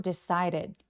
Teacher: decided의 D는 모음사에 끼어서 굴러가는 소리로 decided.